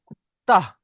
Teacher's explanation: হামজা যুক্ত সাকিনকে একটু ঝাটকা দিয়ে পড়তে হয়